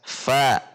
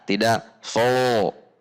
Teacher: Fo itu ketika lidah ditegangkan, tetapi ini lidahnya rileks sehingga huruf menjadi jelas dan tipis.